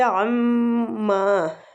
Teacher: تُسْأَلُونَ، لو وہ مد کے ساتھ ہے، کھینچیں گے۔ عَمَّا، میم مشدد پہ غنہ اور کھینچیں گے بھی الف مد ہو رہی ہے